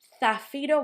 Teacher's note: Zafiro was that Z at the start, that sounds like th.